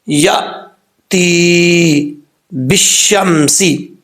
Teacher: حمزہ ساکن پہ جھٹکا دینا. اگر آپ اس کو جھٹکا دیں گے، قلقلہ بھی ساتھ کریں گے تو یہ غلط ہے.